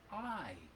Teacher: the word is I it starts with a little glottal stop but it's mostly that vowel sound and the vowel sound is I now watch my mouth I